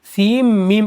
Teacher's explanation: سین کے نون کو میم میں ملا دیں گے، سیم میم پڑھیں گے